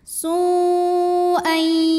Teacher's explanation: Maka sin dipanjangkan boleh 4 boleh 5 harokat. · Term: mad wajib muttasil